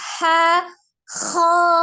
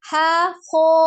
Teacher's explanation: ketebalan yang didapatkan dari huruf kho, yang termasuk salah satu huruf yang bersifat tafkhim atau dibaca dengan tebal adalah dengan cara mengangkat pangkal lidah, bukan dengan memajukan kedua bibir.